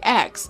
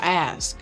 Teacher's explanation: This is called metathesis, which involves switching around sounds and words.